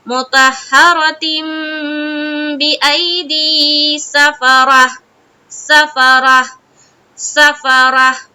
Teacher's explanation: جب ہم اسٹاپ کر رہے ہیں تو ہائے ساکینہ جو ہم نے بنایا ہے، تجوید جو کہہ رہا ہے کہ جب بھی ہم گولتا پر وقف کریں گے تو اس کو ہائے ساکینہ بنائیں گے. تو جب ہم ہائے ساکینہ بنائیں گے تو ہا کی آواز بالکل کلیئر آنی چاہیے کہ ہم وہاں پر ہا پڑھ رہے.